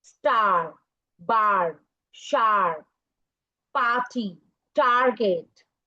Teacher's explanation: आर इतना controlling होता है कि वो सारे वॉल साउंड्स को नीचे कर देता है और अपनी साउंड दे देता है